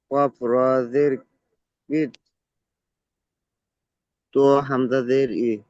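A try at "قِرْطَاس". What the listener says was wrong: ত হামজা নয়, ত আলিফ সিন, ত আলিফ সিন জাবার, তস, কির তস। ত এর উপরে জাবার, তারপরে আলিফ, তারপরে সিনের উপরে সাকিন। তাহলে ত আলিফ সিন জাবার, তস, কির তস।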